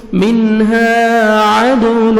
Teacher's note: دال حروف قلقلہ میں سے ہے ڈبل ساؤنڈ آئے گا